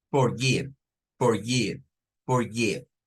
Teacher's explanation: no es como una I, porque la I es larga. Esta es una I, I, es I corta del inglés